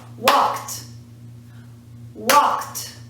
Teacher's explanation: there's no second syllable here we're not saying wall kid